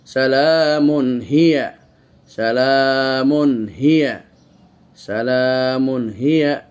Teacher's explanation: এইখানে আমরা সালামুন করে এই তানবিনকে স্পষ্ট উচ্চারণ করতেছি, কেন তানবিনের পরে এজহারের অক্ষর হা এসেছে।